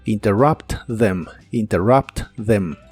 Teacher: La TH de them se pronuncia como si fuese una D vibrante.